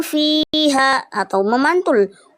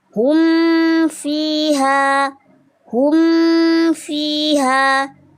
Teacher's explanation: Makhraj dua bibirnya yaitu di pada huruf mimnya ya. Dia dibaca jelas tidak boleh dengung. Tidak hum fiha atau memantul. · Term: izhar syafawi